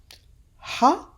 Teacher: which is like an H sound but that is pronounced from deep down your throat